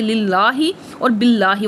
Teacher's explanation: اگر لفظ اللہ سے پہلے زیر ہو تو دونوں لام بریک پڑھے جائیں گے، جیسے للہ اور باللہ وغیرہ۔